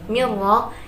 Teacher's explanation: mirra itu bacaan idgham bila ghunnah sebab nun sukun bertemu dengan huruf ra. Ra di sini dibaca tafhim atau tebal.